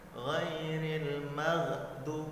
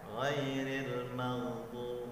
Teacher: Maghdu berlalu karena sifatnya rakhawah